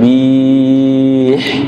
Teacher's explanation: Kalau berhenti bih, berarti bihnya dipanjangin.